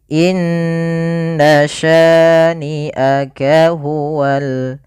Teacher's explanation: Kemudian pada lafal sya di sini ada bacaan mad tabi'i, yaitu fathah bertemu dengan alif, panjangnya 2 harakat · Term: mad thabi'i